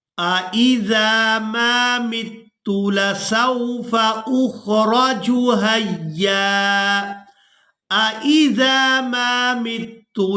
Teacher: अब यहाँ पर दो हमजा एक ही जगह पर जमा हो गए हैं तो दोनों को बिल्कुल वाज़े और साफ करके अदा करेंगे।